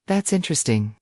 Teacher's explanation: With a flat tone it sounds like you don't care but with a rising energetic tone it shows you're truly engaged